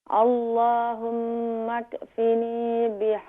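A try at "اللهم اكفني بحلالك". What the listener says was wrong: یہاں مکفینی, یہاں کیف کے اوپر قلقلہ نہ کریں, کنٹرول کریں. اللہم اکفینی.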